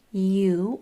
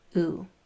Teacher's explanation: that U long sound could come out in one of two different ways. It could say its whole name, you, or just that last part, oo.